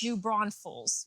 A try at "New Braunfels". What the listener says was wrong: There's no S in the middle. New Braunfels.